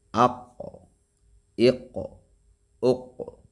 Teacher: لیکن جو قاف ہے موٹا حرف ہے یہ، یعنی نقطے والا قاف، اس کو موٹا بھی پڑھا جائے گا اور اس پہ قلقلہ بھی کیا جائے گا